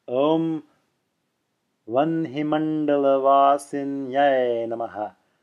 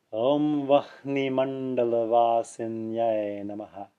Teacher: I'm pronouncing the N before the H in the word Vanhi.